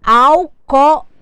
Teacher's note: O meu acento será no segundo O da palavra. O meu ao se transformou numa subtônica. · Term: sílaba tônica